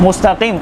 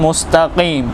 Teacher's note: जो तालू का सखत हिस्सा है उस पर जबान की जड़ ऊपर लगेगी तो काफ अदा होगा काफ को भी मोटा अदा करना है